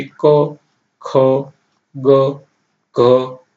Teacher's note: ક વર્ગની, જેને કંઠ્ય તરીકે ઓળખવામાં આવે છે. આ વ્યંજન કંઠમાંથી બોલાય છે